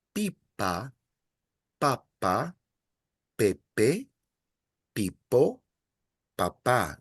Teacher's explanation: I'm emphasizing the second last syllable with the exception of the last word, because the last word has a written accent.